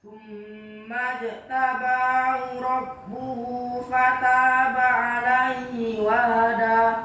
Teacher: Dalnya kurang tepat maksudnya karena dia menempatkan ujung lidahnya ke langit-langit yang atas.